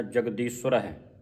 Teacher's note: ਅਧਕ ਲਾ ਕੇ ਉਚਾਰਨ ਕਰਨਾ ਕਸ ਕੇ ਬੋਲਣਾ